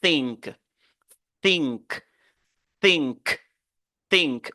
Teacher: vous mettez la langue entre les dents et puis vous sifflez de l'air sans pour autant émettre de la voix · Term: consonne sourde